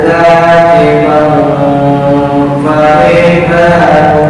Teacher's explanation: dengung ikhfa ya, tanwin bertemu dengan fa